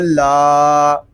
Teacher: لام کو ہم ایک الف تک کھینچ کر پڑھیں گے کیونکہ یہاں پہ الف مدہ ہو رہا ہے۔ الف مدہ اس لیے ہو رہا ہے کہ الف سے پہلے زبر آ گیا ہے۔